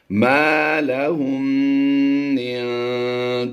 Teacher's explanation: یہ میم مشدد ہے تو اس میں ہم نے غنہ کر کے پڑھنا ہے، تو یہ غنہ آنے کی آواز دے گا، یعنی مکمل یہ غنہ ہو جائے گا۔